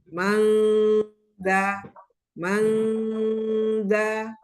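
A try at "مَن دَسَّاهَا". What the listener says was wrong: Eh, tapi jangan diangkat pangkal lidah nanti ada seperti huruf eng. Jadi dia nggak huruf eng, tapi lebih ke huruf nun yang samar. Datar je lidahnya jangan diangkat. Madasa.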